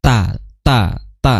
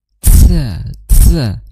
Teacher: Menggesekkan makhraj. Sedangkan ta itu syiddah bukan menggesekkan